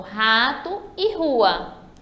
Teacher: é simples a regrinha diz o seguinte a regra diz que o r no início da palavra ele tem um som forte